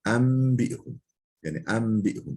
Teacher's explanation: İklab yani enbi'hum. Daha doğrusu nun mime dönüşüyor.